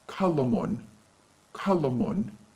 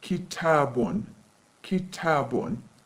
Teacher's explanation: If we want to say a pen in modern standard Arabic, we add voweling at the end of the word, tanween damma, and the word becomes qalamun, qalamun. We get the sound of nunation at the end of the word.